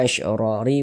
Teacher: Kemudian ra dibaca panjang, ra dibaca panjang. Ini namanya adalah mad iwad.